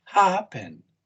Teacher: It's first syllable stress, right? First syllable stress.